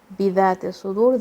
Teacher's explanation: dal will come from the tip of your tongue.